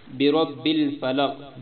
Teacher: برب میں را موٹی ہے، پر پڑھنا ہے